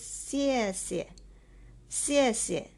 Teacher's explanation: The second word is pronounced as neutral tone without any tone above.